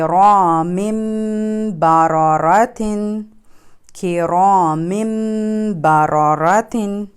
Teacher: یہ ہے, اب اس ورڈ کو ہم ایسے پڑھیں گے کہ را من نہیں پڑھیں گے ہم اس کو. ہم تنوین کی جو من کی آواز ہے اس کو مم سے چینج کر دیں گے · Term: اقلاب